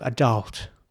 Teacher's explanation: it's really pronounced somewhere in between a and ä